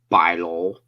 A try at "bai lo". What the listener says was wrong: Maybe you kind of pronounced it a little wrong. Try to work on your vowels a little more. Relax on the vowels.